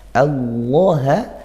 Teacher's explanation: ini lafaz Allahnya kita baca tafkhim tebal